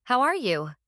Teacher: Make sure your voice goes up slightly at the end when you ask, How are you? back. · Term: rising intonation